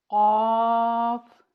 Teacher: جب ہماری زبان کی جڑ حلق کے نرم حصے جہاں پہ قبضہ ہوتا ہے وہاں ٹکراتی ہے تو حرف قاف کی ادائیگی ہوتی ہے۔